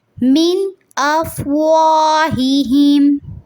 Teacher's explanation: من میں نون ساکن کو واضح کریں گے کیونکہ اس کے بعد حمزہ ادا ہو رہا ہے. حروف حلقی میں سے حمزہ.